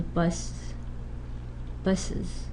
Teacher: Insert the schwa, remember schwa, before a plural morpheme z when a regular noun ends in a sibilant, giving an uz, as in buzz, because it's impossible to say buzz. You add a schwa before z, so buzz, buses, which is pronounceable. A formal notation is nothing becomes a schwa, which means a schwa gets inserted. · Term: epenthesis